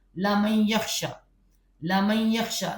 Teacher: میم کو سیدھا یا سے ملا دے